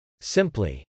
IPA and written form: sˈɪmpli (simply)